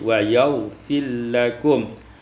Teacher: Pada ayat 29 wa yaghfir lakum, idghamul ra fil lam, diidghamkan ra pada lam menjadi wa yaghfir lakum.